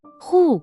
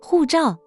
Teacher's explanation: 4th tone, a sharp fall.